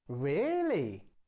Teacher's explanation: you can use a rising falling tone to sound excited · to sound excited or surprised you start and finish higher